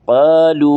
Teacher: قالو اس کو لمبا کریں گے. واو کے اوپر مد ہے، مد منفصل ہے